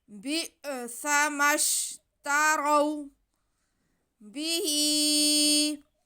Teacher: کھڑا زیر یا مدہ کے قائم مقام اور اگلے لفظ کے شروع میں حمزہ آ رہا ہے، تو یہاں پہ ہمارے پاس مد ہو رہی ہے، مد منفصل، کیونکہ کھڑا زیر یا حرف مدہ اور حمزہ علیحدہ علیحدہ لفظ میں آ رہے ہیں، تو یہ مد منفصل ہے۔ ہا کی آواز کو ہم 4 الف کے برابر کھینچیں گے